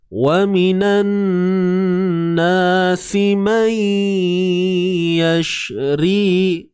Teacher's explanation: Masukkan bunyi nun tu ke dalam huruf ya. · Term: Idgham bi gunnah